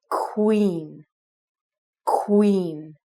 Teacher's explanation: So if you take the first qua sound, you're going to make it like a KW, so it's like queen.